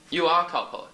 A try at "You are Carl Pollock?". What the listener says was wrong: No, no, it's a question. You are Carl Pollock?